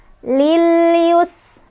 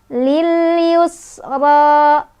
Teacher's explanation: sinnya punya sifat hamas dan shafir. Hamas ada aliran udara, shafir ada desisan.